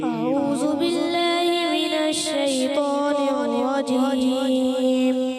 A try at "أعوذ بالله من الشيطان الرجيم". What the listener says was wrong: تو پیارے بچے آپ نے کوشش کرنا ہے ذال کی ادائیگی کلیئر کرنی ہے. تو اعوذو ہوتا ہے اعوذو نہیں ہوتا.